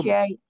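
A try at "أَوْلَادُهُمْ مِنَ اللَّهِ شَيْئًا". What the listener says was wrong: Kurang tahan, Bu. Kurang tahan, satu ketukan lagi.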